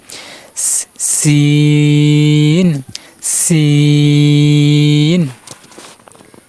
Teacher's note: সিন হরফের মাখরাজ জিবার আগা নিচের দুই দাতের আগার সাথে লাগিয়ে উচ্চারণ করতে হবে